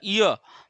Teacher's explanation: य देखो जीभ आपकी क्या तालु पे लग रही है ना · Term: तालव्य